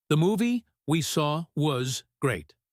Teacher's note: The strong words are movie, saw, and great.